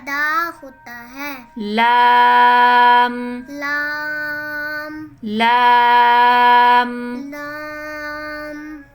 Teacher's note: زبان کی نوک کو اوپر والے 4 دانتوں کے مسوڑوں سے لگا کر ادا ہوتا ہے.